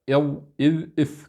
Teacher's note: كلها تخرج من طرف اللسان مع أطراف الثنايا العليا، أقصد الضاء والذال والثاء.